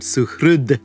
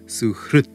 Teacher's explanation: If we have the word suhrud, which means friend, that dakara, that dental, is going to lose that voicing and become the dental dakara, turning it into suhrut.